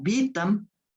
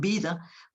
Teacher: Como ejemplo de lo anterior, pues piensen simplemente en palabras como vitam, que de latín, y que derivó en vida, debido a que esa T, que es una oclusiva sorda, se debilita, es decir, se hace sonora, debido al contexto intervocálico en el que se encuentra. Las vocales son los sonidos más sonoros, ¿no?, que existen, y entonces debilita, digamos, a la T, y la T se convierte en D, se sonoriza, digamos, ¿no?